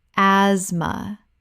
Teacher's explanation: Asthma. The th is completely silent. This is a two-syllable word.